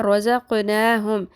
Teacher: قوف پہ قلقلہ بھی آ گیا اور پر بھی ہو گیا. ٹھیک ہے، کیونکہ قوف ساکن ہو گئی۔